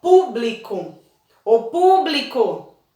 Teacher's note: qual é a sílaba mais forte é o po